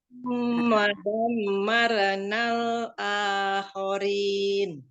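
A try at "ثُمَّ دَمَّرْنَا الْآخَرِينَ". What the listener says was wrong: Di huruf ro, jadi ketika dia sukun jangan sampai ada kesan dia ada re-nya, re. Enggak pakai re. Jadi marona, summa dammarnal akhirin.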